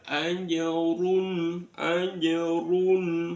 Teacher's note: rnya dibaca tafkhim tebal